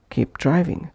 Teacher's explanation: Pushing P into D of driving